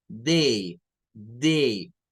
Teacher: tenemos un diptongo, que es el sonido A, de la E con la I